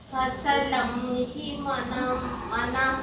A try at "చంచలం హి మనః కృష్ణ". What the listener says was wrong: మీకు కొత్త కొత్త అక్షరాలు కనిపిస్తాయి. చంచలం, సచలం ఎక్కడుంది?